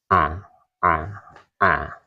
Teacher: Jahar itu jadi nafasnya tidak berembus, tidak ada hembusan nafas.